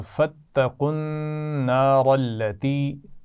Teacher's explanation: نون پر غنہ ہے شد کی وجہ سے